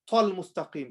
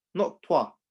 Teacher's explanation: I have to try my best not to circle my lips. Otherwise, there's going to be another extra wow joining.